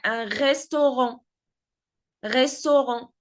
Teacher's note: even though the word ends with a T, we do not pronounce the T.